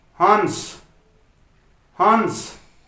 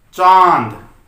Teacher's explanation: अनुस्वार अपने वर्ग का आधा पंचम वर्ण होता है और चंद्र बिंदु अपनी अलग ध्वनि रखता है। दोनों में ही हमारी नाक से हवा निकलती है, लेकिन अनुस्वार में नाक से हवा ज्यादा निकलती है, जबकि अनुनासिक में कम हवा निकलती है